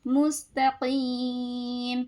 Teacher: مد عارض وقفی کا قاعدہ لگانا ہے تو کھینچیں گی. مستقیم.